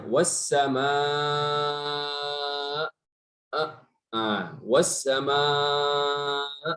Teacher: itu semuanya boleh dilakukan nabr, penekanan pada huruf hamzah